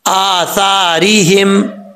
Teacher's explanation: اس کو سا نہیں پڑھنا، سیٹی کے ساتھ نہیں پڑھنا، سا۔ را کے نیچے زیر ہے، را بریک پڑھا جائے گا، اور یہاں پر ہا جو ہے وہ بھاری ساؤنڈ کے ساتھ پڑھا جائے گا۔